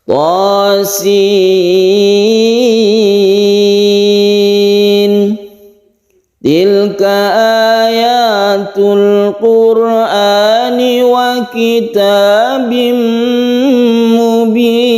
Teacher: Tosin, tonya 1 alif, sinnya 3 alif ya.